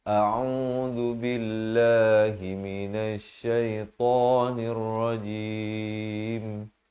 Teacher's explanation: Lafaznya pastikan jelas, hamzah di pangkal kerongkong. Ain di pertengahan kerongkong beri dhammah 2 harakat.